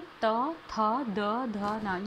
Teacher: इसमें बोलने में जो हमारी जीभ है उसका स्पर्श हमारे दांतों पे हो रहा है। तो यह हमारा दंतव्य हो जाता है।